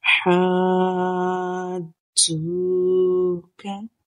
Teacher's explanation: مد لازم ہے تو ہم 6 حرکت یعنی 6 سیکنڈ تک اس کو کھینچ کر پڑھیں گے